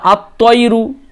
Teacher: কিভাবে বলতে হবে? লামের উচ্চারণ বাদ দিয়ে দিতে হবে এবং তারপরে যে অক্ষরটা আসবে তার উপর তাসদিদ থাকবে। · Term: হুরুফুস শামসিয়া